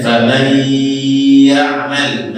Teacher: Nun sukun masuk ke dalam ya. Nah, ketika dia hukumnya di situ idgham bi gunnah, maka harus kita keluarkan suara dari hidung.